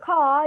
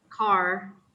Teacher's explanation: American English is rhotic while British English is non-rhotic.